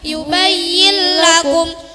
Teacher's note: nun mati atau bertanwin dimasukkan dengan tidak disertai suara dengung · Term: Idgham bila guna